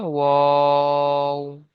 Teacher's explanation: ওয়াও, তিন আলিফ পরিমাণে টান দিয়ে পড়তে হবে